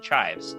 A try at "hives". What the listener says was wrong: Chives, what you put on the potato. No C. Hives.